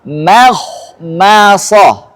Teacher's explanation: ini kha tafkhim, shad tafkhim, mim tarqiq, mim tarqiq.